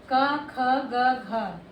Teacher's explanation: ये जो हमारी का वाली सीरीज, जो का वाला वर्ग होता है, ये हमारा कंठ होता है। इसको हम कंठ से बोलते हैं जब आवाज़ जो है गले से निकलेगी।